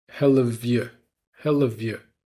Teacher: So we're reducing the vowel in the word you to make it y, nice and short. And we're also linking the V from have to the Y in you.